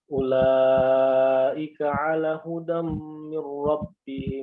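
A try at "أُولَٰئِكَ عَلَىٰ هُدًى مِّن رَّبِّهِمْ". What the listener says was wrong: Jangan ala hudan. Ala panjang dulu. Ulaika ala hudam min rabbihim. Ala panjang ya. Jadi sekilas seperti benar ya, tapi antum atau ada ikhtilas di hudam. Ulaika ala hudam jangan hudam itu ikhtilas. Jadi antum mempercepat daripada kadar harokatnya. Jadi kadar harokatnya itu ulaika ala huda. Kan dia cuman huda dan cuma satu harokat saja.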